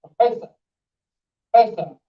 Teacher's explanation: Nobody says professor or professor. All of us know that the accent falls on the second part, the second syllable.